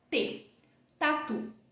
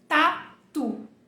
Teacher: é o t do português todo português é um t que a sua língua ela fica totalmente em contato com a parte de trás dos seus dentes